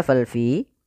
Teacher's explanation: ada kasrah bertemu dengan Ya Sukun maka dinamakan dengan mad thobii panjangnya dua harakat